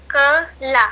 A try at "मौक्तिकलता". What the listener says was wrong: ल, नहीं ला नहीं बेटा, लता।